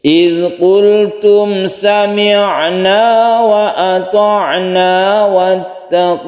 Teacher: Wattaqullah kita baca sebagai mad alif lisukun, ini dipanjangkan sampai 3 alif boleh.